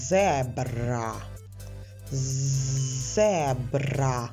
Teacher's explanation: звук з приголосний твердий Ми чуємо на початку слова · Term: приголосний твердий з